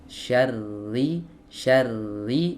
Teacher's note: Sembunyikan di sini dalam artian diringankan, ya. Ringankan sifat takrir saat ro dalam keadaan bertasydid. Ya, syarri bukan syarri.